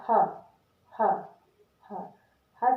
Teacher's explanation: बोलने में ऐसा लगता है जैसे हमारे जो काकल है, मुंह का जो काकल वाला भाग है वहां से हवा निकल रही है।